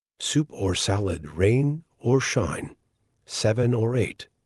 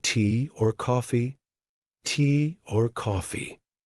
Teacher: the word or gets reduced gets shortened gets linked to a word before or a word after